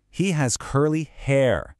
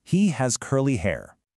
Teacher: Notice how I put a little stress on that last word, hair.